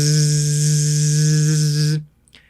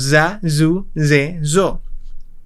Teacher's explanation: El sonido de la Z en japonés suena zzz, casi como el zumbido de una abeja o una mosca.